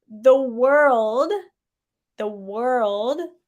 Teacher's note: the L, the tongue goes behind the teeth